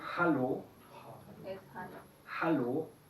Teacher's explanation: En alemán sí se pronuncia como la L, pero el vocal antes debe ser corto. Esta es la regla que tenemos abajo, la regla 30, acortar vocales con redoblamiento.